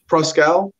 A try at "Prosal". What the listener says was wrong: Prosal. The C is silent.